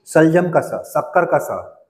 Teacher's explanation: तालव्य स यानी कि शलजम का स शक्कर का स कैसे होगा वो तालू से बोलेंगे